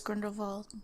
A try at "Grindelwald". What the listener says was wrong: You're supposed to say it with a V. Grindelwald.